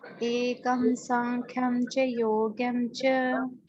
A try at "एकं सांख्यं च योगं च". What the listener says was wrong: योग्यम नहीं है, योगम है, योगम।